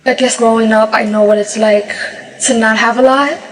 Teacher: New York Latino English speakers have a particularly light L